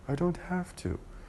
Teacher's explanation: So the voice sound V was changed into the same sound but without the voicing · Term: assimilation of voice